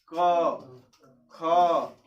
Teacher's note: ये जो है हमारा आवाज जो साउंड है वो कहाँ से क्रिएट हो रहा है, कंठ से। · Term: कवर्ग